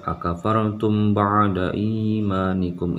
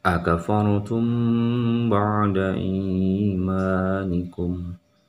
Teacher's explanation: mim mati dan ba ketika dia bertemu maka masuk dalam idgham syamsiyah dan harus dibaca dengung atau ditahan sedikit.